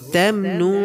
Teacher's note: ওয়ালা তামনুন তাস্তাকসির, ওয়ালা এটা মধ্যে আসলি হবে, এক আলিফ পরিমাণ টানব। তামনুন, নুন সেকেন্ডে পরে তা আছে, গুণ ইখফা হবে